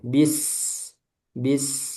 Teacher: sin diberi aliran rakhawah. alirannya lebih banyak dari bainiah